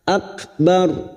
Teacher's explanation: Kaf sukun yang memiliki sifat syiddah dan hamas.